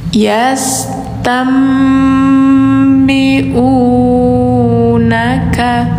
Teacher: Nunnya langsung suara M digantikan, iklab ya.